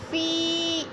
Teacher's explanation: یا ساکن سے پہلے زیر ہے تو ادھر یا مدہ ہو رہا ہے، یا مدہ کو بھی تھوڑا سا لمبا کریں گے۔ سبیل اللہ، سبی، یا ساکن سے پہلے با کے نیچے زیر ہے تو یا مدہ۔